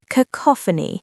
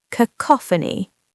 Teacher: Cacophony. The stress is on the second syllable.